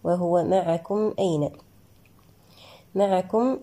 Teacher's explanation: الميم هنا ساكنة قاعد بعدها الهمزة لدينا إظهارا شفويا